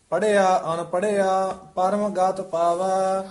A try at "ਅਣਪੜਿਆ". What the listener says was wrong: ਨਾਣੇ ਨਾਲ ਉਚਾਰਨ ਕਰਨਾ ਹੈ। ਪੜਿਆ ਅਣ ਪੜਿਆ ਅਣ